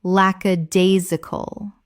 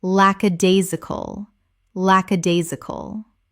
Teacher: Five syllables with the stress on the third